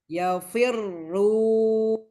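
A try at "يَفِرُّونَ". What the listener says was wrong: Naik lagi pangkal lidahnya.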